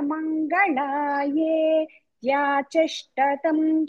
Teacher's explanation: మంగళాయే తర్వాత గ్యాప్ ఇవ్వకుండానే త్యాచిష్ట చెప్పాలి